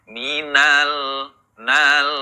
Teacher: Nah, di huruf lam sukun, tadi huruf lam merupakan salah satu huruf yang memiliki sifat tawasud. Nah, maka ketika membaca lam sukun, minal, nal, mengalir sedikit, kemudian ditahan sedikit. Nah, mengalir kemudian ditahan, ya.